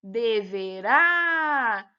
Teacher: A sílaba pronunciada com mais intensidade é o rá, então é uma oxítona.